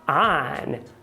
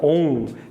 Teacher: Mas no inglês, o N toca nos alvéolos. Então a pronúncia dessa palavra seria on, e não on.